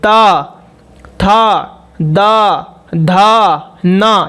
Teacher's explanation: त थ द ध न यह दांत में टच होते हैं